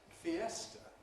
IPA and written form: fiˈestə (fiesta)